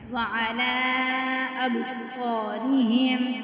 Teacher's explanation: اب با ساکنہ ہے تو یہاں پہ کلکلا ہوگا کیونکہ یہ کتب جد میں سے ہے